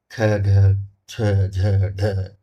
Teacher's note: महाप्राण जिनमें हवा अधिक निकलती हो स्वास ज्यादा लिया जाता हो ख ढ छ झ ढ इनमें थोड़ा ज्यादा हवा निकल रही।